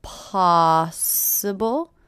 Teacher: if it's possible to sound so I notice the stress here possible first syllable is stress